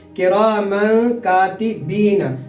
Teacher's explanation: تنوین کے بعد حرف اخفا کے 15 حروف میں سے کاف آ رہا ہے تو یہاں ہم تنوین کی آواز کو ناک میں چھپا کر ادا کریں گے